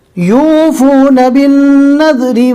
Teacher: رو کو باریک پڑھیں گے، رو کے نیچے زیر ہے